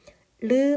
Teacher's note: 혀가 이렇게 위쪽으로 솟고 그 혀를 가운데 두고 양 옆에 빈 공간으로 소리가 흘러나가면서 나는 소리라서 유음이라는 이름이 붙은 거예요